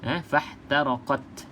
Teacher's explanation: kita panggil sini sifat huruf dia hamas. فَاحْتَرَقَتْ, ada sikit angin keluar.